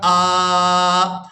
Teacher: वक़फ़ की सूरत में हमने हमज़ा के ऊपर एक ज़बर अदा करनी है और इसको एक अलिफ मिकदार खींचकर अदा करेंगे। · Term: अलिफ मद्दा